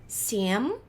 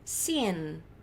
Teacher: Boca fecha pro M, sien. Boca aberta pro N.